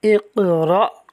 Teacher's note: اس لفظ کے اندر قاف حروف قلقلہ میں سے ہے، ساکن ہے، خوب قلقلہ کریں گے